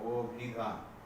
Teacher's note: এখানে অটা উচ্চারণ হয়ে যাচ্ছে ও এর মতো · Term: সংবৃত